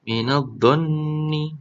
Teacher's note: Minadh-dhanni. Nah, nunnya dibaca dengung karena bacaan gunnah musyaddadah